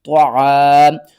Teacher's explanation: علی طا زبر طا، عین الف زبر ع، طع طوا جو ہے یہ حروف مستعلیہ میں سے ہے، اس کو ہم نے موٹا کر کے پڑھنا ہے، اور الف سے پہلے زبر ہے، حروف مدہ ہے، ایک الف کے برابر کھینچ کر پڑھیں گے۔